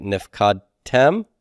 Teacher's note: I've got 3 closed syllables. The accent does go to the heavy ending at the back.